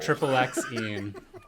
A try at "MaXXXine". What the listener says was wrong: But there's no triple. It's just three of them, so you pronounce all three. MaXXXine. MaXXXine. There are a lot of things, but I think MaXXXine is the most fun.